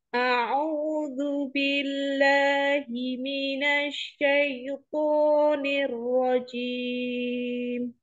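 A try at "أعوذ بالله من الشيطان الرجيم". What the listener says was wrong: Jimnya jangan ada udaranya ya.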